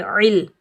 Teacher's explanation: عین کو حلق کے درمیان سے ادا کریں گے، عین کو ہم لام ساکن کے ساتھ ملائیں گے، بغیر کھینچے پڑھیں گے عل۔